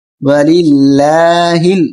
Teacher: زبر لا، ہا لام زیر ہل، وللہ، باریک کریں اس کو، درمیانی لام کو باریک پڑھیں گے اس لیے کہ پہلے زیر ہے